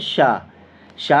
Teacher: श जो है वह तालव्य ध्वनि